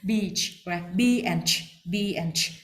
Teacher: Don't link them together. Don't link the E sound with the ch sound after that. Just B and ch, beach. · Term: long E sound